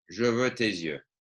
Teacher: notice that the S drags on to the next word.